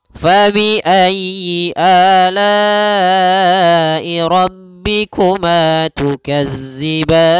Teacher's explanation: Di sini jangan dibaca dengan za, jangan tukazzi, tapi tukadziban. Panjang ban boleh 2 harokat, boleh 4 harokat, dan boleh pula 6 harokat karena dia mad arid lis sukun.